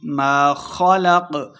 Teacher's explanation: خا اور قاف دونوں کو ہم نے موٹا پڑھنا ہے